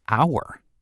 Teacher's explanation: >> Because hour begins with the letter h, you might expect to say a hour, but the h is silent. So the word begins with a vowel sound.